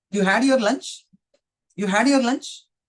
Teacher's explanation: the form of the sentence is like a simple sentence. But the way I'm using the intonation pattern is just like a question or an interrogative